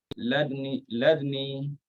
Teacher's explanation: Ikhtilas kita dhammahkan huruf dal.